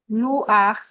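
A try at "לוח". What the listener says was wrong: No, luach. Because there's no aleph or ayin that would separate it. Luach. Luach. luach. Right, luach.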